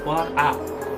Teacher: দেখো, কণ্ঠস্বর মানে কণ্ঠ থেকে যে ধ্বনিগুলো উচ্চারিত হচ্ছে সেটা হচ্ছে আ